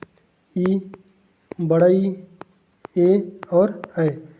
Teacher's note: ऐसे वर्णों के उच्चारण में ओठ गोल नहीं होता, गोलाकार का नहीं होता, गोलाकार का नहीं होता, तो वे स्वर अवृत्त स्वर कहलाते हैं। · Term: अवृत्तमुखी स्वर